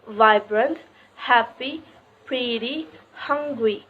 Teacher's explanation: the emphasis of each two-syllable adjective is on the first syllable